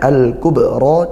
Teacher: di situ ada ba sukun, dibaca mantul, yaitu qalqalah sughra. Sughra karena dia tidak diwaqaf ya, bukan karena waqaf.